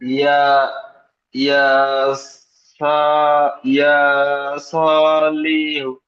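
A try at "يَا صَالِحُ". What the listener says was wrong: লিহু, লাম টান হবে না, লামের নিচে জের।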